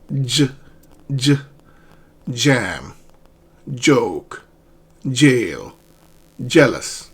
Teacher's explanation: So another way of looking at this sound is as if you were combining d and zh, and it combines, it becomes one sound. · Your tongue touches the ridge and the hard palate, two parts. Okay? So the tongue is raised and it touches the ridge and the area behind the ridge.